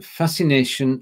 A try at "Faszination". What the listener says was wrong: Yeah, except for it's not fascination, that's English. So, viele Touristen mögen die Romantische Straße, weil sie ihnen Faszination und das Zurückversetzen in alte Faszination.